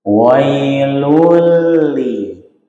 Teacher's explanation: pangkal lidah tidak boleh dinaikkan ketika kita baca tarkik atau tipis